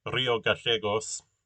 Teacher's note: I pronounce the double L as with the sh sound, which is the way that that works in Argentina and in Uruguay